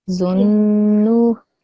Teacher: So when you say zunnu, can you hear my n sound is 2 seconds long? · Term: ghunna